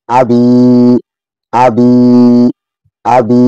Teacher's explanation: বি ইয়ার সাথে মিলবে, জেরের বামে ইয়া সাকিন আছে, এক আলিফ টেনে পড়তে হবে